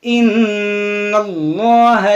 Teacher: नून मुशद्दद है, इसमें गुन्ना होगा, और ये इसमें जलालत है, और इससे पहले देखें ज़बर है, तो इसको हम मोटा पढ़ेंगे।